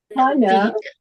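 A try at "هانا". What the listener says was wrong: panjang ukhti, bukan hana. Nah, itu kena tepat ya, kena tak tepat maknanya. Kalau idgham ikhfa iqlabnya itu tak mengapa ya, tapi kalau dua harakat begini kena tepatnya.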